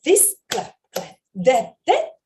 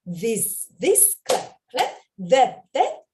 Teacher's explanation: 바람만 나오는게 아니라 떨리는 소리가나요 여기서는 아이들하고 좀 떨어 주자고 진동내는 소리 좀 오버해서 아이들하고 충분한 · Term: 유성음 th